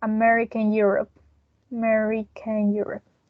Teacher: even though we know that america is america here we are including these r sound because of the intrusive r